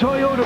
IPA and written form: tɔɪˈoʊtə (Toyota)